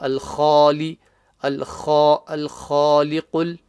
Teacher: The kha, the start, guttural sound, top of the throat.